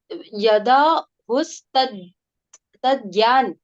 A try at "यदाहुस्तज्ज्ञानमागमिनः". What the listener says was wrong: तज्ज्ञान, हाँ, वो बोलने में तज ज्ञान बोलोगे तो नहीं बोल पाओगे। उसको सही बोलना पड़ेगा। असल में वो ज्ञ नहीं होता है, वो ज्ञ होता है। इसके संबंध में चर्चा भी की थी अपन ने।